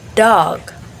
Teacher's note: the tip of the tongue touches or get close to the alveolar. So just behind the upper teeth, like this.